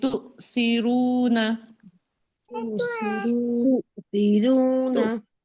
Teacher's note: اب سا میں سیٹی آ رہی ہے سیٹی نہیں آنی چاہیے تؤثرون تؤثرون والآخرة والآخرة پوری توجہ لیسن پہ دیکھیں آ کا